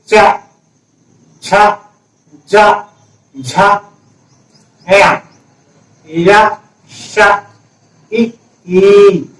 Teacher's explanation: इसका उच्चारण स्थान कौन सा है चा वर्ग का? तालु। और ध्वनि कौन सी है? तालव्य ध्वनि।